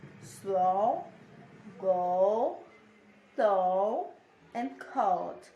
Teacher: This diphthong starts in the central schwa position. The sound then glides to the back closed position